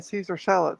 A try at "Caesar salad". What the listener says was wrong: Every time you say Caesar salad, it sounds like you're saying a seizure salad. Like, please don't have a seizure.